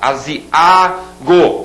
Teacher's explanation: esse A sozinho é a sílaba tônica